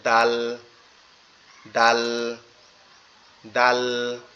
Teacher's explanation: জিহ্বাটা উপরের দুই দাঁতের গোড়ার সঙ্গে লাগবে